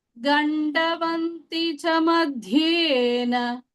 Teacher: Gandavanti cha madhyena. The dha is Mahapranah here, and the da is not Mahapranah.